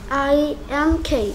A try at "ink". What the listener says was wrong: K 발음도 해주셔야죠. Ink.